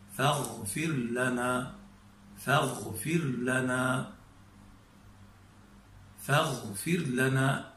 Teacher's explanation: هذا الصوت الذي نسمعه هو عملية مرور الهواء من بين أقصى اللسان وأصل اللهاء، هذه المنطقة الرطبة الرخوة، تكاد هذه الرطوبة تمنع الهواء أثناء مروره فتزاحم وتكسر من الكسر الجبر على الرجوع، والهواء يريد أن يمر. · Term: صوت الغين